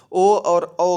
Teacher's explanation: ओ और औ का उच्चारण स्थान कंठोष्ठ होता है। इनके उच्चारण में कंठ और ओष्ठ दोनों की ही आवश्यकता होती है।